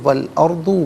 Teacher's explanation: را ساکن ما قبل حمزہ پر زبر، را ساکن کو پر کر کے پڑھیں گے